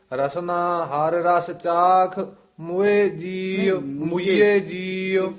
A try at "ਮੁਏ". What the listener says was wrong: ਇਸ ਦਾ ਉਚਾਰਨ ਮੁਏ ਕਰਨਾ ਹੈ, ਮੂਏ ਨਹੀਂ ਕਰਨਾ। ਧਿਆਨ ਨਾਲ, ਪਹਾੜੀ ਬੋਲੀ ਦੇ ਵਿੱਚ ਮੁਏ ਕਹਿੰਦੇ ਨੇ ਪਿਆਰੀਏ ਮੇਰੀਏ, ਪਿਆਰੀਏ ਅਰਥ।